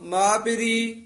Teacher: ਮਾ ਨਹੀਂ ਕਹਿਣਾ ਨਾਸਕੀ ਨਹੀਂ ਬੋਲਣਾ